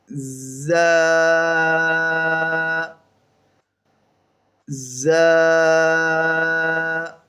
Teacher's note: آپ نے تھوڑا سختی کے ساتھ اور اس کے اندر سیٹی بھی لانی ہے